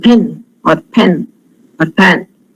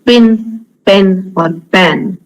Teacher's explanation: word initial is slightly aspirated